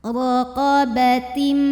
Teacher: Ro-nya dibunyikan secara tafkhim karena ro-nya berbaris di atas, maka cara bacanya ditebalkan. Ro, pangkal lidah angkat ya.